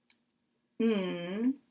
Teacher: n which is made with the tongue in a similar position to a t or a d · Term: nasal sounds